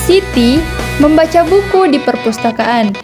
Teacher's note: Maksudnya yang membaca adalah Siti, bukan orang lain. Maka saya memberikan penekanan nada pada kata Siti.